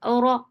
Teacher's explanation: Ora is heavy because whenever ra is with fatha, it is heavy.